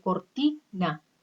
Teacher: La que suena más de las 3 sílabas es ti. Por lo tanto, va a ser sílaba tónica